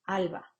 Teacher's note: la fricción va a aparecer entre los dos labios se acercan pero no llegan a a cerrar totalmente la salida del aire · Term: fricativo bilabial sonoro